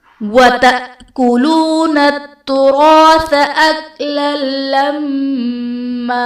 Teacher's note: وَتَأْكُلُونَ میں حمزہ ساکنہ ہے، جھٹکا دے کر پڑھیں گے